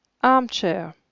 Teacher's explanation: la première syllabe est accentuée par conséquent la deuxième ne l'est pas ce n'est pas comme en français on dit fauteuil de manière